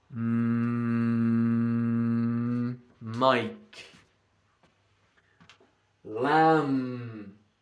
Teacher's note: M. Lips together. Air goes through your nose. Nasal consonant.